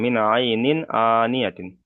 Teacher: তানবিনের পরে হুরুফে হালকির 6টি অক্ষরের মধ্যে থেকে এখানে হামজা এসেছে, তাই তানবিনের আওয়াজকে বিনা গণ্যায় জাহির করে তাড়াতাড়ি পড়তে হবে